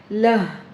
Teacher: त ज़बर त, लाम ह ज़बर लह, ह अक्सा हलक से गहराई के साथ अदा होगा